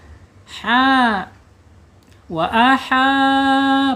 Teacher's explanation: makhrajnya di ada di tenggorokan bawah ha wa aha panjang dua harakat ya dua harakat karena dia mempunyai hukum mad thabi'i atau mad asli ya atau mad asli.